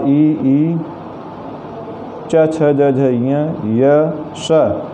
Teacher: जिह्वा ताल जो मुख के अंदर है उस ओर प्रयत्नशील होती है, उसी वर्ण की ओर जोर देकर इन वर्णों का उच्चारण करती है।